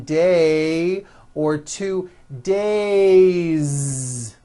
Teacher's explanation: It's not days, unvoiced, it's days with a voiced Z ending.